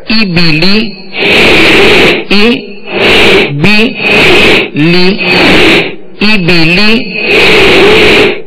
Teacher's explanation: زیر کو ادا کرتے ہوئے آواز کو نیچے مکمل گرا دیں گے تاکہ مجہول پیدا نہ ہو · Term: زیر کی ادائیگی